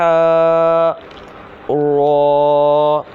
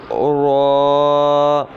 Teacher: را جو ہے یہ زبان کی نوک اور مقابل کے تالوں سے ادا ہوتا ہے، یعنی کہ اس کو بھی پڑ یعنی کہ موٹا کر کے پڑھیں گے.